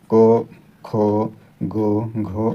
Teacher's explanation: पांचवा ये जो होते हैं वो अल्प प्राण होते हैं और दूसरा और चौथा जो होता है वह आपका महाप्राण होता है